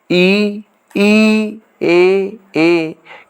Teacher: जीभ के प्रयोग के आधार पर अग्र स्वर ई, ए के उच्चारण में जीभ का अग्रभाग काम करता है, जिसके कारण इसे अग्रस्वर कहा जाता है।